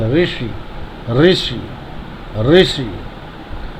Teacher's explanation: ऋषि वाला आ रहा तो इस रा में कंपन करके बोला जाता है